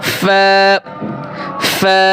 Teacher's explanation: 14 নম্বরে নিচের ঠোঁটের পেট, নিচের ঠোঁটের পেট সামনের উপরে 2 দাঁতের আগার সঙ্গে লাগিয়ে একটি হরফ উচ্চারিত হয়